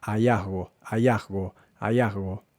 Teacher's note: Y luego la G la pronuncia también de forma bastante débil.